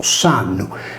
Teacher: ha perso per aferesi la consonante iniziale /Z/ ed è diventato S’annu